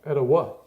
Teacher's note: With emphasis on the third syllable.